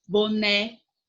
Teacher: O né é a sílaba mais forte